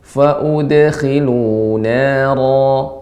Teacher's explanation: Dal qalqalah, maka caranya cukup dipantulkan.